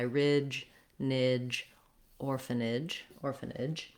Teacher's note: just make sure that your voice is on for that j sound and that you're pushing it out. You don't want it to be nij or nitch. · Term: affricate sound